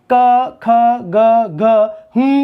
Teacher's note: कंठ नामक उच्चारण स्थान को कोमल तालु भी कहा जाता है। · क पूरा का पूरा वर्ग और ह का उच्चारण स्थान कंठ है।